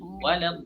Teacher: Yang panjang itu alifnya, bukan lamnya.